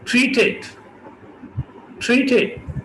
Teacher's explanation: अब इस एग्जाम्पल को देखिए, ट्रीटेड, ट्रीटेड, क्योंकि ट्रीटेड में दो सिलेबल्स हैं, पहला टी R E a ट्री और दूसरा टी ई डी टिट। तो दोनों के शुरू में ठ ठ है, इसलिए दोनों एस्पिरेट होंगे। ट्री एक दफा हो गया, दूसरा फिर टिट, ये दूसरा सिलेबल।